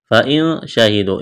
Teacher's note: اخفا کریں گے، نون ساکن کے بعد شین ہے، شہیدو، واو مدہ ہے، الف کے برابر کھینچنا ہے۔